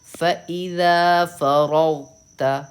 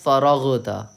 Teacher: بہت سے لوگ اس کو پڑھتے ہیں فرغتا, فرغ غ قلقلہ کر دیتے ہیں غین پہ, لیکن آپ کو قلقلہ نہیں کرنا ہے کیونکہ قلقلہ صرف اور صرف قاف طا با جیم دال پہ ہوتا ہے.